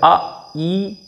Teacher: अब देखो आ ई, इसका उच्चारण करने में आ ई हो रहा है, कंठ और तालु, कंठ से आ बोला और तालु से ई बोला, आ ई यानी कि आई। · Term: कंठ तालव्य